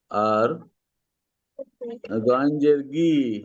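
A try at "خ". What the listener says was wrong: ওটা গইন নয়, এটা খজের খি।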